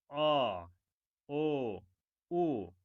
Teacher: এই ধ্বনিগুলো উচ্চারণের সময় আমাদের জিহ্বার অবস্থান একটু পেছনের দিকে অবস্থান করে। এই জন্যে নাম হয়েছে পশ্চাৎ স্বরধ্বনি।